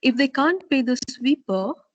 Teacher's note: So you can have a rising tone on the sweeper, or you could have a falling rising tone, because you are trying to imply something by talking about this condition